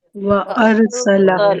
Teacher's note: सीन में सरसराहट होती है